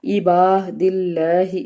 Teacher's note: عباد اللہ، اس میں بھی الف سے پیچھے زبر ہے، اس کا مطلب ہے الف مدہ کا قاعدہ ادا ہو رہا ہے، اور لفظ اللہ سے پیچھے زیر ہے، اس لیے یہاں پہ اللہ کو ہم نے نرمی سے پڑھنا ہے